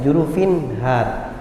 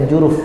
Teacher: Dia dibaca izhar ketika disambung bacaannya, jurufin har. Tapi ketika waqaf maka dia tidak dibaca izhar, seakan-akan tidak ada nun itu. Dan itu tidak dibaca ketika diberhentikan, maka dibaca juruf.